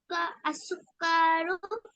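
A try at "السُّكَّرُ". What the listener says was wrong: সুক্কা, কাতে টান হবে না। সুক্কারু।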